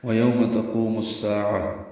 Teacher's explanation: میم کو الساعہ کے سین سے ملائیں گے، ادغام شمسی ہوگا، الف لام نہیں پڑھیں گے. سا الف مد ہے، صفیر کی آواز سے ادا ہوگا، عین وسط حلق سے ادا ہوگا، وقفاً یہ طے مربوطہ ہے، ہاں میں تبدیل ہو جاتی ہے، الساعہ ہو جائے گا.